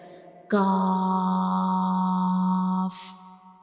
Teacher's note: when we pronounce kaf, the very back of the tongue will touch the hard palate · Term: lighter letter